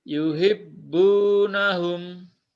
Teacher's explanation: Hati-hati, bunya panjang satu ayunan. Panjang ya.